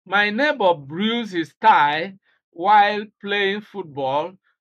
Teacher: So stress is on bruised. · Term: contrastive stress